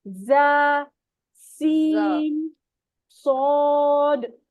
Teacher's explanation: जबान की नोक नीचे वाले सामने के दो दांतों के मसूड़ों से लगती है। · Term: मखरज